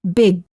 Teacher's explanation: Don't say big, say big. Hold the final G sound by making sure that your tongue remains up in the back of the mouth when you're done saying the word.